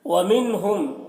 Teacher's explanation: وَمِنْهُمْ، یہاں پر نون ساکن کے بعد ہا ہے حروف حلقی میں سے، نون کو ظاہر کر کے جلد پڑھیں گے، اظہار کریں گے